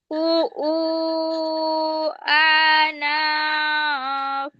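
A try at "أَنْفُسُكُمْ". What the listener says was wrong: না, আনা পড়লে তো নুনে জবর হওয়ার কথা ছিল। আবার বলো, দেখে বলো। ফুসু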